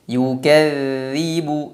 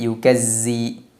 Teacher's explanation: Berikutnya dzal tasydid. Dzal diucapkan dengan cara mengeluarkan sedikit ujung lidah. Dan suaranya dialirkan.